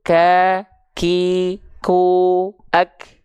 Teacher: karena dia sifatnya syiddah kuat akhirnya si suara tertahan karena suara tertahan akibatkan si nafas tidak begitu mengalir akhirnya Hanya